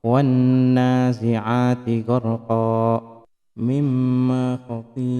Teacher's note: Maka gunnah yang seperti ini disebut dengan gunnah akmal, yakni dengung yang sempurna, dikarenakan suara seluruhnya dikeluarkan dari rongga hidung